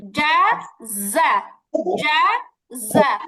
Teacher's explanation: জাযা জা জা জা জা জিমের উচ্চারণ হচ্ছে জিহ্বা থেকে আর জায়ের উচ্চারণ হচ্ছে জিহ্বার আগা নিচের দাঁতের পিছনে লাগবে